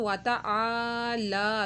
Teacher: ये देखें वाता आ के आगे अलिफ था, इसको भी एक अलिफ के बराबर खींचा और लाम के ऊपर खड़ा मा था तो वाता आला, दोनों को एक एक अलिफ के बराबर खींचा